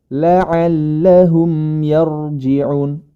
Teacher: Huruf ro berharokat sukun yang didahului dengan fathah pada huruf ya, maka huruf ro tersebut dibaca tebal. Ro sukun tersebut dibaca tebal.